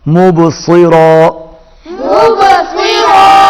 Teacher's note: صاد موٹا اور را کو پر پڑھیں گے